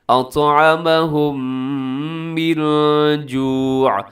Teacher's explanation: میم ساکن کے بعد میم ادغام غنے کے ساتھ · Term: ادغام شفوی